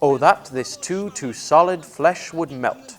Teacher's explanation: each foot is made up of an unstressed followed by a stressed syllable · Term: iambic pentameter